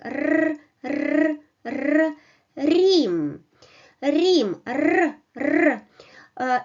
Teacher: You touch hard palates, you touch alveoles with the back of your tongue, and you produce vibration